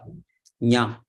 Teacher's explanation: Nya is the talu plus nasika. Nya. Talu, that is coming from this place.